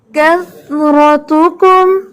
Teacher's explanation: کس نہیں پڑھیں گے ہم, اس کو کث پڑھیں گے